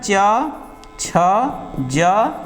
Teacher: उच्चारित करते समय जीहवा ऊपर उठ के ताल को स्पर्श करती है। · तो जो हवा निकलने वाली है मुख विवर से थोड़ा उसको घर्षण महसूस होगा। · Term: स्पर्श संघर्षी व्यंजन